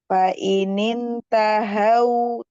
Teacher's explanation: Tahau hanya ha dari bawah pangkal tenggorokan. Fa'inin tahau hanya dari bawah ya, jangan dari tengah.